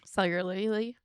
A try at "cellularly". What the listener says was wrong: Cellularly. Cellularly. You sound like you're saying celery.